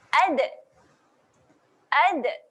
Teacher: Tetapi bagi huruf dal dia ada satu sifat, iaitu sifat lantunan. Kita dah tolak hujung lidah di belakang gigi atas, kemudian kita lantunkan, tarik balik ke belakang. Dia menghasilkan bunyi ad, ad.